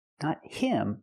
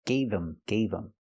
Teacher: The H in him is silent because the word's not stressed.